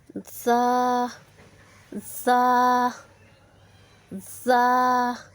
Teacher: सीटी वाले हर्फ ज़ा। जब ज़बान की नोक सनाया उलिया और सनाया सुफला के दरमियान आ जाए तो ज़ा अदा होता है।